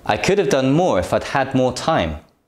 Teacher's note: The stressed words are done, more, had, more, and time. The weak forms are could and have.